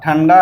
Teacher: यदि अनुस्वार ट वर्ग के वर्णों अर्थात ट ठ ड ढ के पूर्व आता है तो इसका उच्चारण न के रूप में होता है